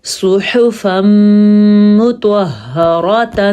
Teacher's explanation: طوا پر پڑھنا ہے کیونکہ طوا حروف مستعلیہ میں سے ہے، جیسا کہ صاد حروف مستعلیہ میں سے ہے۔ ہا چھاتی سے نکلے گا، اور را کو پر پڑھنا ہے کیونکہ را کے اوپر زبر ہے · یہاں پہ ادغام بالغنہ ہو رہا ہے کیونکہ نون تنوین کے بعد میم آیا ہوا ہے · صاد کو پر پڑھنا ہے کیونکہ صاد پر پڑھے جانے والے حروف میں سے ہے۔ ح پڑھنا ہے، خا نہیں پڑھنا، خوا نہیں پڑھنا اس کو۔